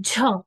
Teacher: व्यंजन का उच्चारण करते समय मुख से अधिक हवा निकल रही है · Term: महाप्राण